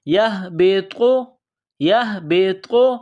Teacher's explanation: یہ طا ہے، بغیر نقطوں والی تا بڑی تا، اس کو موٹا کرنا ہے